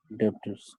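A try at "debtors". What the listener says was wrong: डेबिटर्स। ब का उच्चारण मत करना, बी यहाँ पे साइलेंट होता है, साइलेंट लेटर है। डेटर्स। ब का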